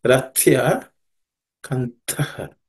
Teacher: In the first line, Rathya, and the Th is the second letter in the Tha Varga consonants. So it has to be aspirated.